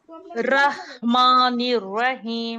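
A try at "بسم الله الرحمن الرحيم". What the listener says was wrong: नहीं, देखो, तुम्हारा 'मीम' मोटा हो गया है।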